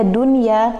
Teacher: nun sukun bertemu dengan ya dalam satu kata, maka tidak dibaca idgham, tapi nunnya dibaca jelas